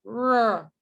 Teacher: So it's made with the tongue tip and the alveolar ridge. So this bit of my tongue is approaching this area, R, and staying there. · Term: retroflex